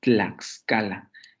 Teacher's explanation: Tenemos la consonante dental oclusiva sorda, luego la lateral, luego la vocal que estaría funcionando como el núcleo de la sílaba, y luego las dos consonantes siguientes que serían la coda de esta sílaba.